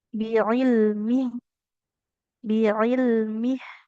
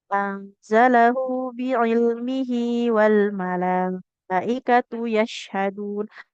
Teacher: Kalau kita berhentikan dia hanya jadi ha sukun biilmih. Biilmih. Tapi kalau sahabat semua lanjut contohnya bacanya anzalahu biilmihi wal malaikatu yashadun. Maka h-nya jadi panjang dua harakat. · Jadi kalau kita wakaf, jadi kan haknya hasukun. Nah, kalau kita lanjutkan maka baca panjang dua harokat.